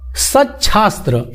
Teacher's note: यदि त के बाद स हो तो त की जगह च और स की जगह छ हो जाता है।